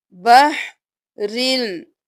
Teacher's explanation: ہم بحرن نہیں کریں گے، را کو لام کے ساتھ ملائیں گے